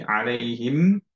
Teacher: ধরে রাখছি, এন্ড হচ্ছে লিপসটা ক্লোজ রাখছি, এর জন্য আমাদের নেজাল ক্যাভিটি দিয়ে সাউন্ডটা বের হচ্ছে, এটাই হচ্ছে গুন্না।